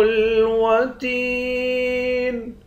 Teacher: تا کو یا کے ساتھ ملا کر یا کو ایک الف کی مقدار کھینچیں گے، یا حروف مدہ ہے، آخر میں نون ساکن ہے